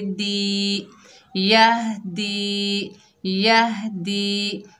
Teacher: दाल के नीचे ज़ेर है, आगे या साकिन है, ये या मद्दा है, एक अलिफ की मिकदार खींच कर पढ़ेंगे।